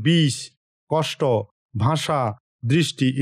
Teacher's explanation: আপনার জিভটি ঠিক মূর্ধায় গিয়ে লাগবে এবং শ্বাসবাহুকে ঘর্ষণ করে মূর্ধন্য স শব্দটি উচ্চারণ করবে বা মূর্ধন্য স ধ্বনিটি উচ্চারণ করবে।